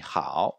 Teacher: c'est le A qui est prononcé plus long que le O. Donc ça sera sur la voyelle, et quand il y en a 2, sur la voyelle la prononcée le plus longtemps.